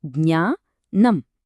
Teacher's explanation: జ్ఞ నం ఇక్కడ రెండు పూర్తిగా భిన్నమైన అక్షరాలు ఒక్క చోట చేరాయి. ఈ పదాన్ని పలికినప్పుడు ముక్కు నుంచి అలాగే గొంతు లోపల నుంచి ఒకేసారి ఒక యూనిక్ ఫొనెటిక్ ప్రెజర్ రిలీజ్ అవ్వడాన్ని మీరు గమనించవచ్చు.